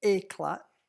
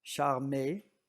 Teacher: None of these are diphthongs — that is, none of them are the English ay.